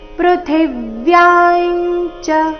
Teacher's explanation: ಅಲ್ಲಿ ಥಿ ಮಹಾಪ್ರಾಣ ರಸ್ವ ಬರಬೇಕು ಅದರ ಮೇಲೆ ಆಘಾತ ಯ ದೀರ್ಘ ಹೇಳಿ ಅನುಸ್ವಾರದ ಉಚ್ಚಾರಣೆ ಅನುನಾಸಿಕ ಯ ರೀತಿ